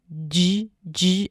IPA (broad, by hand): dʒ